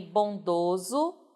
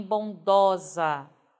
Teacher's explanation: muda-se a vogal tônica fechada para vogal aberta